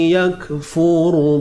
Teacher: Ra yang mati ni dibaca dengan tebal